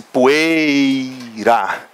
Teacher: O E é vogal, o I vai ser semivogal. O I quase que desaparece, poeira. Esse I, então, semivogal, ditongo decrescente.